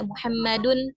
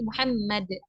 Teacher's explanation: tapi ketika kita wakf tanwinnya itu akan hilang atau enggak kita baca lagi